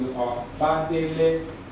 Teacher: the vowel is dropped off, but the high tone moves onto the A